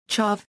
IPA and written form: ˈtʃæv (Chav)